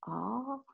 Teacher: Ah is here in the back of the throat. Ah. The A is spoken, you can feel it, a little further in the throat.